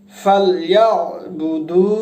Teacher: আইন হা, এই 2টা হরফ যেটাকে আমরা মাখরাজ বলি, হলকের মাঝখান থেকে উচ্চারিত হবে।